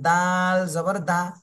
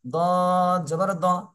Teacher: একটা দা চিকন হবে, দ এটা একটু মোটা হবে